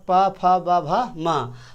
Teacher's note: पा वर्ग मतलब अपना पूछिएगा, पा वर्ग का मतलब है पा फा बा भा मा। तो ये सारे का उच्चारण जो है ओठ से होता है।